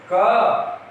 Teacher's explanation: अब आप क को बोलोगे तो पीछे से अ की आवाज आ रही है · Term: व्यंजन